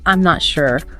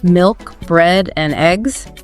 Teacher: level intonation this is where your voice stays pretty flat